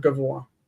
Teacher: Furtive patach, it means it's in Hebrew patach genuva. It's the a that sneaks in after a long vowel before a guttural. So after o, after a, after e, and before a guttural.